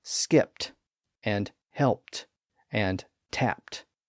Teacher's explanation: we pronounce them with a voiceless T sound because the verbs end in a voiceless P sound. The suffix matches the ending.